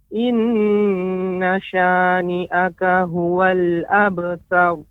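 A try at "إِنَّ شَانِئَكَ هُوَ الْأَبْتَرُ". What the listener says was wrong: Lumayan bagus pengucapan ininya. Nanti terus berlatih ya.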